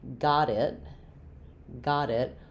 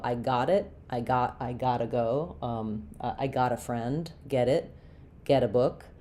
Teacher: we would link those together and flap the t, which is the same as how we do d's in the middle of words